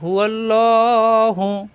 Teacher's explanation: আল্লাহ শব্দের ডানে জবর আসছে এজন্য আল্লাহ শব্দ ল হবে মোটা হবে